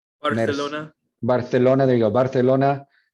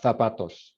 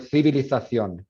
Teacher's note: Interdental, fricativa, sorda. And this is interesting because it happens in Madrid and most of Spain only when you see these sequences, CE, CI, y luego Z.